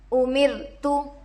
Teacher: رو پر جزم ہے، رائے ساکنہ ہوگا. رائے ساکنہ سے پہلے زیر ہے، رائے ساکنہ کو باریک پڑھیں گے. تا پر پیش کی حرکت ہے، جلد پڑھے.